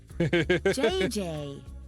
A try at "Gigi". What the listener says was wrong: En français, you pronounce G like J and J like G. She may very well be JJ in America, but in France, she is Gigi.